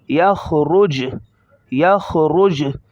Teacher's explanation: خا کو موٹا کریں گے، را کو موٹا کریں گے